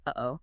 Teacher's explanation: >> Glauilization involves the glottle stop. The sound that sharp momentary silence you hear when you say uh-oh. It's caused by the vocal cords snapping shut briefly.